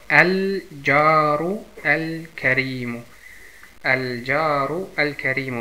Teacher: Also auch zu merken, diese Buchstabe hat keine Verdopplungszeichen, diese auch. Und die beiden gehören zu den Mondbuchstaben, deswegen die Lam muss ausgesprochen werden.